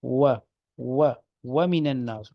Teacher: ہونٹوں کو ذرا گول کر کے اس کی ادائیگی ہوتی ہے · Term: واؤ